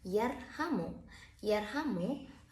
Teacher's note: Yarhamu, Ro sukunnya didahului oleh huruf ya yang berharokat dengan fathah. Berarti Ro-nya harus dibaca dengan tebal atau dibaca dengan tafkhim.